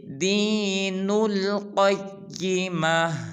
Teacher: قیمہ کے قاف کو پر ادا کریں گے اور آخر میں ہا کو بھی ظاہر کریں گے